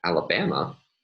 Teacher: since there are no other start tones by the edge rule the mid tone will associate to the first syllable and a high tone will associate to the last syllable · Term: emphatic question tune